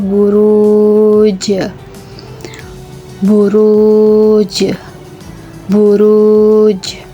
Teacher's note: Huruf jim tersebut berada di akhir ayat dengan berharakat sukun. Maka huruf jim tersebut dibaca dengan disertai pantulan.